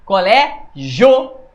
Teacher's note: Olha como o O é mais forte. Então o O é a vogal e o I é a semivogal. Você fala fraca para depois falar forte. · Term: ditongo é crescente